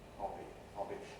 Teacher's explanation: voicing switches on for the vowel and continues through the consonant